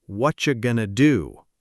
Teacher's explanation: And why does that work? Because going to gets reduced to gonna, and what are you blends into whatcha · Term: reductions